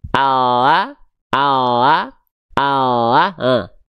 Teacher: hanya menyentuhkan bagian ujung akhir lidah saja ini, ke langit-langit bagian depan, cuman betul-betul ujung lidahnya doang yang ini, ya, seperti ini. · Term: huruf L